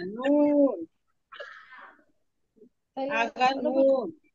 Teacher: 9 নম্বর মাখরাজ জিহ্বার আগা তার বরাবর উপরে তালুর সঙ্গে লাগাইয়া